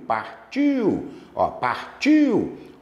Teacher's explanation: O I é forte. Vogal. O U vai fazer o papel da semivogal. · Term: Ditongo decrescente